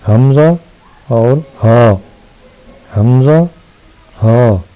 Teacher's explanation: یہ دونوں حروف جو ہیں یہ حلق کے نیچے والے حصے سے ادا ہوتے ہیں، یعنی حمزہ اور ہاء، حمزہ ہاء۔